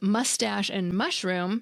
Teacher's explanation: Each word is two syllables long with stress on the first syllable.